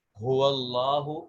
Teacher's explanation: اس کے بعد اگلا مخرج ہے ہا۔ ہا سینے سے، حلق کے اس حصے سے جو سینے کی طرف ہے، اس کو اقصی حلق کہا جاتا ہے۔